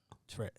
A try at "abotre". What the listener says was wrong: About tre. Tre. It has to roll.